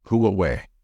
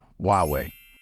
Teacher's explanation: in English the H becomes silent so it should be pronounced as huwei however more and more